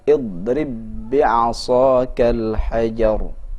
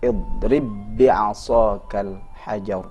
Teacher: Idgham berarti lebur, maka pesan yang terdengar walaupun di sini dua ba namun terjadi penyatuan. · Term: idgham mutamathilain